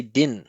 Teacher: One of our most famous Americans is Michael Jordan. And again, it's the unstressed syllable with the N at the end, so there's no vowel